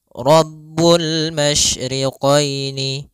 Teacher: Alif lam qamariah adalah huruf alif dan lam yang dia ditulis dan dibaca dan terbaca huruf lamnya dengan jelas